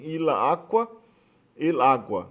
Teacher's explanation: o A final, o A que fica depois do L, foi absorvido pelo A do substantivo